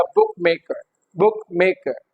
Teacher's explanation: Okay, so book would be stressed.